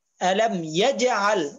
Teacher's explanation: এখানের মধ্যে জিমের মধ্যে কলকলা হবে